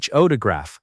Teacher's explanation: We say photograph, with stress on the first part